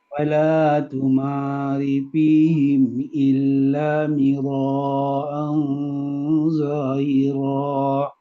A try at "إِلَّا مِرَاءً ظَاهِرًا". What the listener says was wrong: Kurang mad wajib mutasil. Illa mira'an zahira.